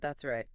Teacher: It sounds like that's righty. The S sound at the end of that connects smoothly to the R sound in right.